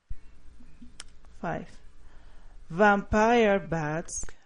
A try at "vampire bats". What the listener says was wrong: vampire bats. I want you to be more aware of the V because we don't want it to sound like a B. Not vampire bats, but vampire bats.